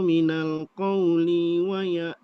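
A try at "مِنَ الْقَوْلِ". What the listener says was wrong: qawli, linya pendek. Diulang dari minal qawli, linya pendek. Huruf kaf ya.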